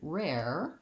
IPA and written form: rɛr (rare)